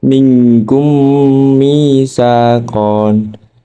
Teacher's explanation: Cara membacanya, mim sukun dibaca dengung 2 sampai 3 alif disertai bibir terkatup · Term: idgham syafawi